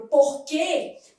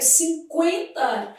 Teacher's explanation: quando eu pego a palavra porquê, o U não é pronunciado, mas quando eu pego 50, esse U é pronunciado, 50, eu tenho um ditongo, né?